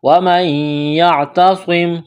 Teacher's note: گے، ادغام کا قاعدہ جاری ہوگا غنے کے ساتھ، وَمَن يَعْتَصِم، صاد کو موٹا کرنا ہے، سیٹی کی آواز پیدا کرنی ہے · نون ساکن کے بعد یا ہے، یہاں پر ادغام کریں گے، ادغام کا قاعدہ جاری ہوگا غنے کے ساتھ